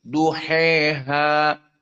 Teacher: Di sini dalam keadaan alif layyinah duha seperti wadduha. Maka di sini al-imalah al-kubra menjadi wadduhe.